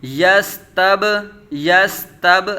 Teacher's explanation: با ساکن ہے، قلقلہ خوب ظاہر ہوگا